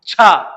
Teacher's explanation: छा में देखिए कितनी वायु निकल के आ रही